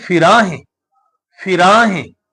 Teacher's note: ਰਾਰੇ ਦੇ ਕੰਨੇ ਨੂੰ ਥੋੜਾ ਜਿਹਾ ਜੋਰ ਦੇ ਕੇ ਪੜਾਂਗੇ ਤਾਂਕਿ ਹਾਹੇ ਦੀ ਸਿਹਾਰੀ ਉਚਾਰਨ ਕੀਤੀ ਜਾ ਸਕੇ